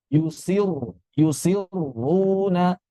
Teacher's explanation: Sifat ro kedua ini tebal. Berarti di sini langsung kita baca tebal walaupun sebelumnya kasrah